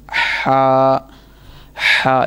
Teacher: हलक के दरमियान वाले इससे सही अदा होगा, ना कि नीचे वाले से नहीं ये अदा होगा, बल्कि दरमियान।